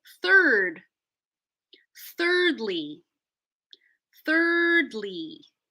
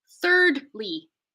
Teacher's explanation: keep the D in the first syllable third thirdly thirdly so you're going to connect the Rd into the L you can't really put a pause in there if you did it would sound like this thirdly so you